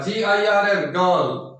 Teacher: आर के तुरंत बाद कोई कॉन्सोनेंट होता है तो आर साइलेंट हो जाएगा